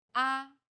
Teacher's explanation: the first tone is steady with a high pitch · The fourth tone falls sharply and quickly from a high pitch.